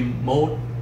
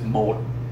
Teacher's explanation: mode all right with this is mode you notice how my my voice drops significantly